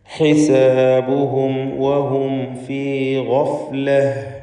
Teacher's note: ഇവിടെ ആവർത്തിച്ച് വരുന്ന സാക്കിനത്തായ മീമിനെ ഇൽഹാർ ഷഫവി നൽകി മണിക്കാതെ വെളിവാക്കണം.